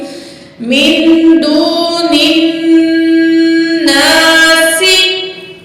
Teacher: सीन में सीटी वाली आवाज होगी